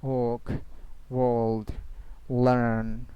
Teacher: Work, R will be silent here.